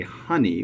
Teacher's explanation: we pronounce the first syllable with a stress, and we don't stress the second syllable.